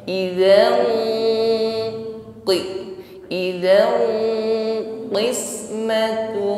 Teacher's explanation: Saat mendengungkan ini dengungnya sudah tebal karena yang dihadapi setelah tanwin adalah huruf isti'la yang bunyinya tebal. Jadi bukan sekedar idzan ini masih terlalu ringan dengungnya.